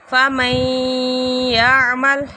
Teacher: نون ساکن کے بعد یا آ رہا ہے، ادغام ہو رہا ہے، غنّے کے ساتھ ادغام ہے